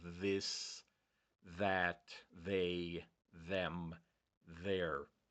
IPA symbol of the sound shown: ð